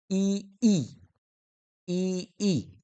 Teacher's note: तालव्य म्हणजे आपल्या तालूचा किंवा टाळूचा वापर होत असतो